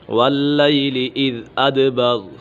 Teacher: کلا والقمر واللیل اذ ادبر، ادبر دال کے اوپر قلقلہ ہو رہا ہے